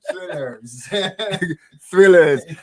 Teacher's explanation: no th, no tongue between your teeth